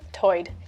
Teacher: Lumby English speakers share vowel sounds present in the Outer Banks accent where tide is pronounced toid.